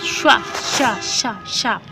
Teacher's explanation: ठीक है, फिर है कि हिंदी की शा ध्वनि, श्वा शा शा शा, तो ये कैसी है, ये आपकी तालव्य है, क्योंकि जहाँ शा शब्द का आप उच्चारण कर रहे हैं तो जो आपकी जीभ है वो तालु को छूती है